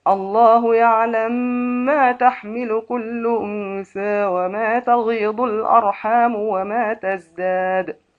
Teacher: السوسي يعلم ما بالإدغام الكبير مع مراعاة الغنة وأنثى بالتقليل